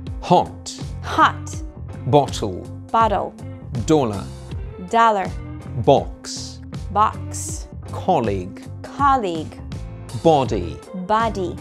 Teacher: Letter O is pronounced O in British English. And as ah by American native speakers.